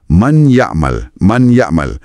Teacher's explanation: Awak tak dengar lagi bunyi N yang jelas pada man. Sebaliknya bunyi M dan Y tu macam diselaputi satu dengung hidung yang lembut. Ia buat peralihan antara perkataan tu jadi sangat lancar. · bunyi N asal tu memang lebur masuk dalam huruf berikutnya. Tapi sifat sengau N tu dikekalkan dan dipanjangkan sikit. Ia wujudkan satu sambungan yang sangat beralun dan melodius. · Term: Idgham bikhunnah, Idgham bi khunnah